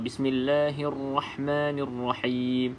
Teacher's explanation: Jadi getaran ra tu bermaksud sifat kepada ra takrir kita panggil. Ya, ra tu dia ada sifat takrir, iaitu getaran.